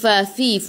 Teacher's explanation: Fa 2 harakat, ada alif kecil mad asli. Fa fi, fu gigi atas menyentuh perut bibir bawah.